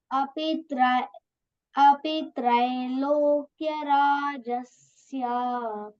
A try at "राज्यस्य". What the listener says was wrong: So Rajya we want, huh? Jya. J-Y. Api Trailokya Rajyasya. That is a very common mistake. Even adults say Rajasya. It is not Rajasya. Rajyasya. Ya should come.